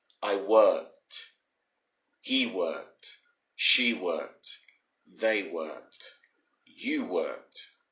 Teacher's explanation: the e disappears and you put pressure on the d to make it sound like a t sound